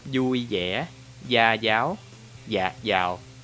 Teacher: In the north accent, they pronounce totally different. But in the south, all of them mostly pronounce as y.